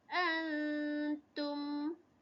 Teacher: Seterusnya kalimah yang ni, yang di sini ada warna hijau, nun mati bertemu dengan huruf ta. Kita akan baca dia secara dengung